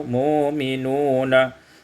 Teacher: mu'minuna ibdalul hamzati wawan, ditukar hamzah waw, mu'minuna